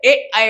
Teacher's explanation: ए ऐ के उच्चारण में कंठ और तालु दोनों का योग होता है।